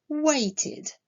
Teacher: Le verbe wait, lui, se termine par le son t. La terminaison ed, dans ce cas-là, se prononcera id